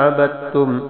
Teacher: عبدتم میں با کو تا کے ساتھ ملانا ہے، کیونکہ تا پر شد ہے، دال گر جائے گی، لکھی جائے گی لیکن پڑھی نہیں جائے گی۔